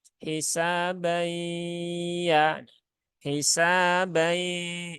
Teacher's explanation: nunnya jangan dihilangkan sepenuhnya. Karena nun itu pasti lewat rongga hidung. Jadi masih ada suara setengah nun dan setengah ya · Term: idgham naqis